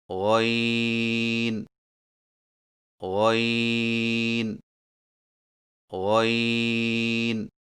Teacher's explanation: غین کی ادائیگی میں زبان کی جڑ کو تالو کی طرف بلند کرتے ہوئے موٹی آواز میں پڑھیں، یعنی غین غین غین۔